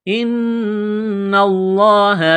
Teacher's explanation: نون مشدد پر غنہ کریں گے، آواز ناک میں چھپائیں گے